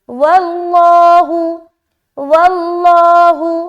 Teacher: واللہ، لفظ اللہ کا لام کو موٹا، اور دیکھیے یہاں پر لفظ اللہ کے لام سے پہلے کیا ہے؟ زبر ہے، تو اس کو ہم موٹا ادا کریں گے